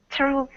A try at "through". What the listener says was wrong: Close. Yeah, just that TH sounds a little bit off.